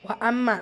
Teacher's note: மீம் முஷத்தா குன்னா செஞ்சு ஓதணும்